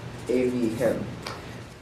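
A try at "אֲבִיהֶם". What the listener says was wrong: Evihim. And watch your segols that you don't make them all like Ceres.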